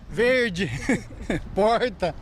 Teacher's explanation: às vezes o r falta outra e ele vem com força como que é o sotaque daqui é o r bem puxado · O R é grande demais. Este é o R retroflexo, o popular R caipira.